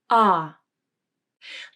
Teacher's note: The jaw opens quite a bit. The tongue is low in the mouth, the tongue tip rests behind the bottom front teeth, and the back of the tongue pushes down. You should feel some tension in the back of the tongue as it pushes down. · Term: ah vowel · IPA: /ɑ/